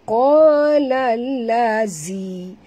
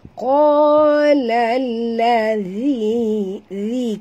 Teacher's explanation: Ya. Ladhi, zi di sini makhraj zal di hujung lidah. Jadi jaga, jangan tebal, jangan baca qala lazi.